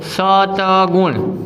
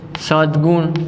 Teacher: હવે આ ત વર્ણ છે એ અઘોષ વ્યંજન છે, અઘોષ વ્યંજન, અને ત પછી આવતો ગ વર્ણ છે એ ઘોષ વ્યંજન છે. આમ અઘોષ પછી ઘોષ આવે છે તો અઘોષના સ્થાને તેના વર્ગનો ત્રીજો વ્યંજન આવે તો તનો થશે દ. તો શબ્દની સંધિ થશે સદ્ગુણ.